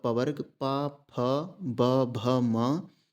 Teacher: इन सभी वर्णों का उच्चारण स्थान ओठ से होता है